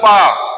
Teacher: आपने बोला पा, ओंठ जुड़ गए।